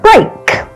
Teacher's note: This diphthong is the combination of two vowel sounds, eh and I. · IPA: /ei/